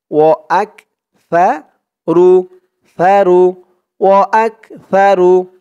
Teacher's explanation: আক হামজা দিয়ে কাফ ধরবে রু উচ্চারণটা একদম নরম পাতলা হবে জিহ্বার মাথা উপরের দাঁতের মাথার সাথে লাগবে সার উচ্চারণটা করার সময়